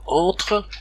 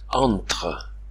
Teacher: les voyelles nasales font entendre la consonne nasale qui suit donc on a une sorte de double nasalisation non pas entre